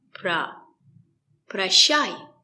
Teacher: O is not stressed. We pronounce it as a.